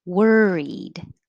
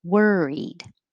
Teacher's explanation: It looks like an O, but it sounds like an ER